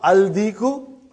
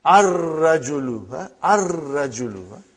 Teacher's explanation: And when you will pronounce them with alif lam, you will not pronounce lam. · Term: sun letters